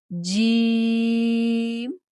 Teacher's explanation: جیم زبان کا درمیان تالو کے درمیان سے لگے